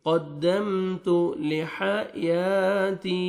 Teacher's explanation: قدمت تا کو باریک پڑھیں گے تاکہ طا میں ساؤنڈ مکس نہیں ہونا چاہیے